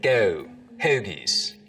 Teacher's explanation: the goat diphthong starts to move forwards in the mouth.